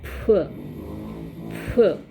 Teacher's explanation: Okay, as in British English, instead of f, how it is realized in South Asian English is p.